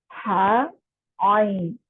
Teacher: हा आइन जो है ये दरमियान वाले हिस्से से निकलता है